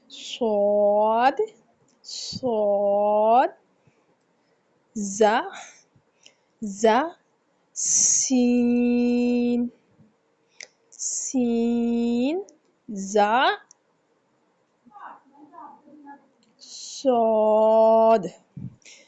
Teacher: सद सद जा सीन सी जा सद जुबान की नोक और दोनों दांतों के अंदरूनी किनारे से अदा किया जाता है। जुबान की नोक और दोनों दांतों के अंदरूनी किनारे से स्वाद जा और सीन की अदायगी की जाती है।